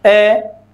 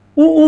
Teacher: ऊ ऐसे करते हैं तो हमारे होठ गोल आकार बना लेते हैं